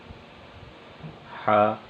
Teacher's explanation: حا کی ادائیگی کی جگہ وہ حلق کا درمیان ہے، حلق کے درمیانی حصے سے حا ادا ہوگا۔ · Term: حرف حا